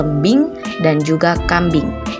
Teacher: Fonem vokal I juga memiliki alofon I tinggi bawah depan tak bundar seperti pada kata lembing dan juga kambing.